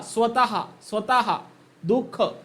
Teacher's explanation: तर या विसर्गाचा जो काही उच्चार आहे तर तो कंठेमध्ये केला जातो म्हणजे कंठेमध्ये अ आ हे दोन स्वर आणि जो विसर्ग आहे